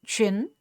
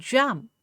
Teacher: Ch is a voiceless consonant and j is a voiced consonant